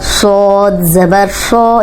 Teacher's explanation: ये सीटी वाला भी है और मोटा भी है